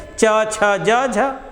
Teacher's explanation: अब यही पकड़ लिया गया कि उच्चारण करते समय जीवा ऊपर उठ के ऊपर उठकर के ताल को स्पर्श करती है और जब ताल को स्पर्श करती है तथा हवा को मुख विवर से मुख विवर से बेटा मुख का जो स्थान है उसके विवर से मुख विवर से बाहर आने में संघर्ष का सामना करना पड़ता है · और फिर वहां देखो लिखा गया उच्चारित करते समय जीवा ऊपर उठ करके ताल को स्पर्श करती है, तो हवा को मुख विवर से बाहर निकलने में, जब जीविया तो हर तरुआ जाएगी इसे लगी, तो जो हवा निकलने वाली है मुख विवर से थोड़ा सा उसको घर्षण महसूस होगा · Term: स्पर्श संघर्षी व्यंजन